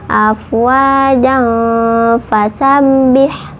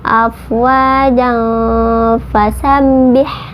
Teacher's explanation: Nah kalau kita mau disambung bacanya boleh ya, afwajan fasabbih. Nah kalau disambung itu ja tadi tidak menjadi mad iwad tapi jadi ikhfa hakiki karena ada tanwin bertemu dengan fa